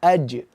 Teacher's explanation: Kalau jim itu kita sukunkan, tidak, dia terputus suaranya, jahar. Aj, dan hurufnya kuat sehingga ketika pantulkan jim itu dia sampai, ketika kita wakafkan sampai memantul.